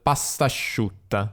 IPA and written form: pastaʃʃiutta (pastasciutta)